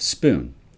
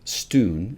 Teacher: instead of a p sound they have substituted a t sound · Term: phonemic paraphasia